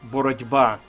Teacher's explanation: вам Необхідно пам'ятати що є деякі приголосні звуки Що уподібнюються наприклад ми пишемо боротьба через літеру т а вимовляємо звук д